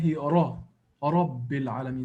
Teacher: So if it's Ra or Ru, these are strong emphatic sounds. It means that the Ra becomes with full mouth. It's pronounced with full mouth.